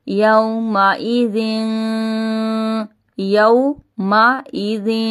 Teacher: یو میں ہم واؤلین ہو رہا ہے، اس لیے ہم اس کو کھینچیں گے نہیں، یو پڑھیں گے اس کو بس۔